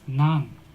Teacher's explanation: Uzbek, for example, takes that long ah sound and makes it an o sound a lot of the time. But in Kyrgyz, it stays ah, nan. Okay.